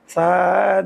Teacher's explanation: জিব্বার আগা সামনের উপরের 2 দাঁতের আগার সঙ্গে লাগাইয়া শীষ ছাড়া নরম করে পড়তে হয়